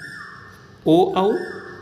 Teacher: 7 number पर है ए, ऐ, कंठ और तालु से उच्चारण होने के कारण कंठ तालव्य कहलाते हैं। ओ, औ कंठ ओष्ठ से उच्चारण होने के कारण कंठोष्ठ्य कहलाते हैं